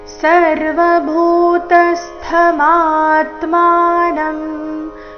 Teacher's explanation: ಇಲ್ಲಿ ಭೂ ಮಹಾಪ್ರಾಣ ದೀರ್ಘ ತ ಮೇಲೆ ಆಘಾತ ಬರಬೇಕು